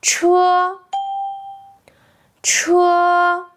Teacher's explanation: Just remember, high, flat, steady. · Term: first tone